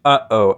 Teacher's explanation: The glottal stop isn't really phonemic. It's used in words like uh-oh